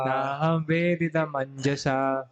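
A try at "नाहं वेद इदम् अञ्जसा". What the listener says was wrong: नाहं वेदेदम अंजसा। ई नहीं सुनाई पड़ना चाहिए। अब उसको तोड़ के बोल रहे हैं, लेकिन संधि करके बोलेगी ना। ना लिखा कैसे, वैसे बोलिए। ना हम वेदम अंजसा।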